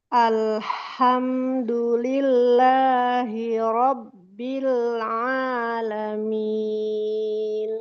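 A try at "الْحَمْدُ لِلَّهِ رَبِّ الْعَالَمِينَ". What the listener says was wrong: Satu, di sini huruf H tidak boleh takalluf. Alhamdu, tidak. Tidak berlebihan ya Bu ya, tidak boleh berlebihan. Tadi kaidahnya kan 5. alhamdu, alhamdu. Kemudian huruf dal tempatkan ke tempat tumbuh gigi. Nah, ke sini Bu. Ujung lidah tuh nempel ke sini nih. Nih, tempat tumbuh gigi itu sini Bu nih. Lillahi Robbil langsung tebalkan.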